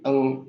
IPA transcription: ŋ